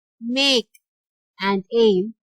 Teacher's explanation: And in make and aim, again you have A sound being repeated. So the letter A in make and the letter A in aim represent the same A sound in English, which is a diphthong.